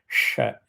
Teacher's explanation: You have sh for Shambho, which comes with a gasp of air. When you chant sh, you see the sound that comes out.